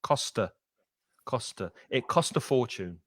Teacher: when you've got that A sound there, a fortune, it will connect to the T of cost, costa.